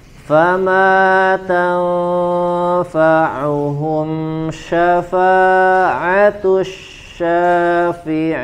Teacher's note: Huruf ma panjang dua harokat